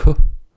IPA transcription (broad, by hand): k